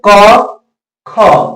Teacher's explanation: क में कम लग रहा है, कम वायु निकल रहा है, ख में अधिक वायु निकल रही है मुंह से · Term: महाप्राण